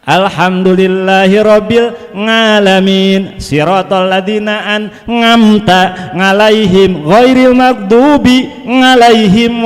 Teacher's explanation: Ada juga pengaruh dialek kedaerahan adalah membaca ain jadi nga.